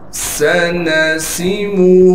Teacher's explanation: سین کو صاف کر کے سیٹی نکال کے پڑھیں گے. نون کو بالکل کھینچنا نہیں ہے.